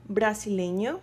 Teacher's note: the stress of the word is in le. So the emphasis the stressed the emphasis and the most important well not the most important but where you have to put all your the strength of your voice is in le.